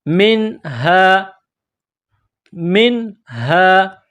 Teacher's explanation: نون ساکن کے بعد ہا ہے، حروف حلقی ہے، تو یہاں نون ساکن پر آواز ناک میں نہیں چھپائیں گے، غنہ نہیں کریں گے